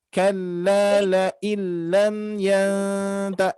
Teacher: harus didengungkan. Nun mati bertemu ta berarti termasuk ikhfa